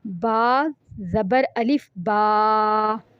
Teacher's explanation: बा तो हमने पढ़ लिया, लेकिन उसके बाद जो हमने एक अलिफ के बराबर इसको खींचना है, इसे एक अलिफ के बराबर लंबा करके पढ़ते हैं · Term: हरूफ़े मद्दा